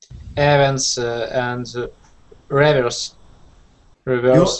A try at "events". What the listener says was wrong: You're stressing events at the beginning. Events. I would say events. Event. I would stress the second there and reverse. So some words have a stress in the second syllable.